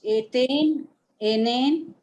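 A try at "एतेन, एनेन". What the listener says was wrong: Etena, enena. The akaranta should be heard there.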